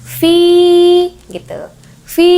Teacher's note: Jadi bacanya harus dibaca sepanjang 1 alif atau 2 harokat atau 2 ketukan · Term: mad tabi'i